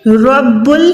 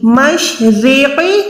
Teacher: رب را موٹی, مشرق را باریک